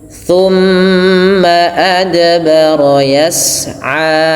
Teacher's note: Yas'a, thumma adbara yas'a, panjangkan a 2 harakat. Dan hati-hati dalam lafal ain jangan menebal